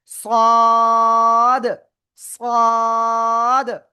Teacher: জিহ্বার আগা, সামনে, নিচে, দুই দাঁতের পেট ও আগার সাথে লাগাবো। ঠিক আছে, লাগিয়ে মোটা আওয়াজে আমরা চার আলিফটা নিয়ে উচ্চারণ করব।